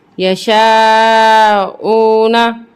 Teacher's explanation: واو ساکنہ سے پہلے پیش ہے یہاں پہ بھی ہم اس کو 1 الف کے برابر کھینچیں گے